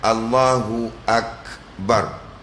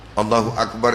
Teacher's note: Yang ini kaf, dia tak ada sifat qalqalah, dia ada sifat hamash.